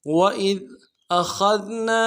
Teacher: حمزہ کو نرم سے ادا کریں گے، خا کو موٹا ادا کریں گے، ذال کے ساتھ ملانا ہے، ذال کو باریک ادا کرنا ہے۔